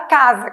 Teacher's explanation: casa não representa o fonema S, casa representa o fonema Z